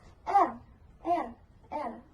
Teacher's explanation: Hambatan dihasilkan oleh getaran cepat atau sentuhan singkat antara artikulator